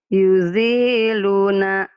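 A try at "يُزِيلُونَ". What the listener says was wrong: Zinya panjang.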